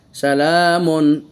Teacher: এই তানবিনকে স্পষ্ট উচ্চারণ করতেছি কারণ তানবিনের পরে এজহারের অক্ষরে হা এসেছে